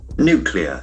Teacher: And the accent falls on the first syllable.